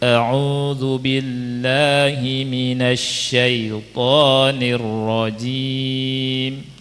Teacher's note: Dan mad thobi'i cuma dua harakat saja diayunkan. Jadi bacanya auzubillahiminasyaitanirrajim.